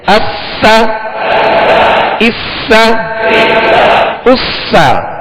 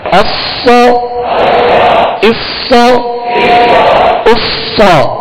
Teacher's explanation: سین کو باریک پڑھیں گے اور صاد کو پر کریں گے